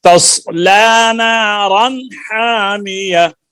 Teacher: نارن پہ اخفا نہیں ہوگا اظہار ہوگا غنہ نہیں کریں گے